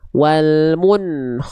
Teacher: karena sebelumnya dommah ya itu nunnya ikut monyong